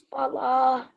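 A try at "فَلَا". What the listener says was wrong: Fala. So I think when you first read it, you didn't prolong it. But remember, alif, when it's attached to a letter, it's usually a letter of elongation. So fala.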